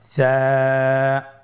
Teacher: সা হরফটির মাখরাজ হলো উচ্চারণের স্থান জিহ্বার আগা সামনের উপরের 2 দাঁতের আগার সঙ্গে লাগিয়ে উচ্চারিত হয়।